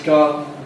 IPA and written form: ˈgɑːdn̩ (garden)